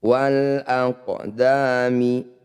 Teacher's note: Qaf sukun disebut bacaan qalqalah sughra. Pantulkan qaf, jangan berlebihan.